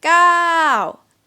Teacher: and this word is long yeah so what is falling time falling tone phonetically it's ah so you go out first and down